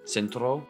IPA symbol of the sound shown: ts